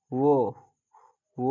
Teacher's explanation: व का उच्चारण स्थान दंत ओट से